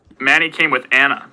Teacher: There is a, it does sound like there's a pitch accent on Anna to me.